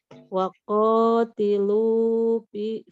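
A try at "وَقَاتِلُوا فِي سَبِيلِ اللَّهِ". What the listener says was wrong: Jangan terlalu panjang Bu. Waqatilu fi sabilillahi. Tuh 2 3. Jangan nggak ada tasdid, ingat Bu.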